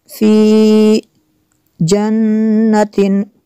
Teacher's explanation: नून में शद्दद है, यहाँ पे गुन्ना होगा।